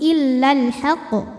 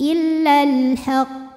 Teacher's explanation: Agak ditahan dulu baru keluar pantulannya. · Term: qalqalah akbar